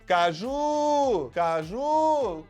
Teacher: a sílaba forte é Ju, é a última sílaba é forte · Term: oxítona